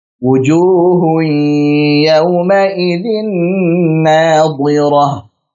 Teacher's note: Saat idgham melebur setelah hui, barulah kemudian keluar dari al-khusyum karena memang idgham bi gunnah. Jadi memang harus kita keluarkan dari al-khusyum.